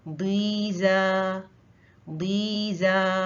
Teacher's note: दी मोटा है, जा बारीक है।